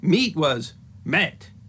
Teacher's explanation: the letter combination spelled E-A was pronounced eh in Middle English.